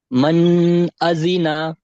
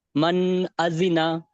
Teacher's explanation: এসেছে এবং পরে হরুফে হালকির ছয়টি অক্ষরের মধ্যে হামজা এসেছে তাই নুন সাকিনের আওয়াজকে বিনা গুন্নায় জাহির করে তাড়াতাড়ি পড়তে হবে